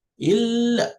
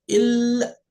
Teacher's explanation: So this illa, for you to pronounce the shadda on the lam correctly, you have to assume you're pronouncing the lam with sukoon and also pronouncing another lam with fatha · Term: lam with shadda